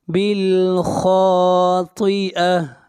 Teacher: خا اور طا کو موٹا پڑھیں گے، یہ دونوں حروف مستعلیہ میں سے ہیں